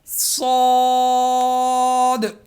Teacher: زبان کی نوک اور سامنے کے دو دانتوں کے کنارے سے صاد ادا ہوگا. صاد.